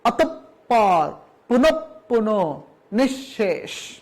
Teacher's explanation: প্রত্যেক জায়গায় আমরা দেখতে পাচ্ছি বিসর্গের পরবর্তী বর্ণটির দ্বিত্ব উচ্চারণ হয়েছে।